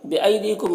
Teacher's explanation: یہاں پر یا ساکن سے پہلے الف کے اوپر زبر ہے تو یا لین ہوا، اسے نرم آواز کے ساتھ جلد پڑھیں گے